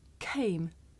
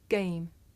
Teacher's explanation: the difference between this voiceless sound that you hear at the beginning of the word came and its voiced partner that you hear at the beginning of the word game